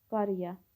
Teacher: qaraya sözü qarıya şəklində tələffüz olunur. A saiti qapalı saitə çevrilir.